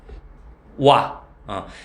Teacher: 얘도 이론적으로 보면 오아를 겁나 빨리 하면 와가 되겠지. 근데 실제로 와 발음하면 앞에 오는 나는 듯 마는 듯 하지. 그걸 반모음 오라고 그래.